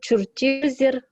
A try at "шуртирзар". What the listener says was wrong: Сирер, шуртир, как у вас там? Зер или зар? Во, шуртирзар через А. Дело в том, что, смотрите, там хотя бы шурте в корне, да, твердые гласные. А, у, а, шурте, да. Шуртирзар. Должно быть по твердости тоже. Посмотрите на корень слова.